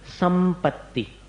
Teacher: दोनों होठ को मिलाकर प। तो दोनों ओठ को मिलाकर करते तो अनुस्वार को भी उसी में जोड़ना पड़ेगा, संपत्ति, तो म जैसा हो गया।